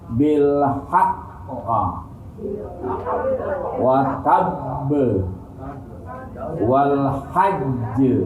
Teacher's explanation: Ditekan suaranya, ditahan 2 harokat, diikuti qalqalah. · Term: huruf qalqalah bertasdid